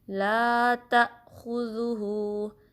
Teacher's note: زال کو نرمی سے ادا کرنا ہے، زبان کی نوک اوپر کے دانتوں کے کنارے سے لگے گی